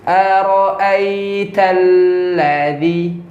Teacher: Zal. Ujung lidah ketemu dengan Gigi atas. ya ujung gigi depan atas ya. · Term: huruf dzal